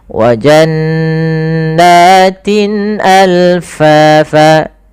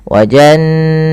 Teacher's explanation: nunnya dibaca dengan gunnah, tahan